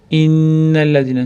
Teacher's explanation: Innallazina nun shadda tashdid bilan kelganligi uchun g'unnasini ushlab turamiz. Innallazina zada til bosamiz, undan keyin mat yod matni beramiz.